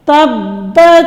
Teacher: با حروف قلقلہ میں سے ہے، جب ہم تا کو با کے ساتھ ملائیں گے جوڑ کرتے وقت تو یہ ساکن ہوگا، تو اس پہ قلقلہ ہوگا